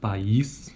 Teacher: durante a articulação de duas vogais em sequência como na palavra país cada vogal ocorre em uma sílaba distinta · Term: sequência de vogais